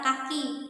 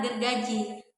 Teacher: dihasilkan melalui pertemuan antara lidah bagian belakang atau dorso yang merupakan artikulator aktif bertemu dengan langit-langit lunar atau velum sebagai titik artikulasi atau artikulator pasif. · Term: dorsovelar